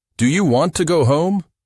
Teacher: Voice rises at the end. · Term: rising intonation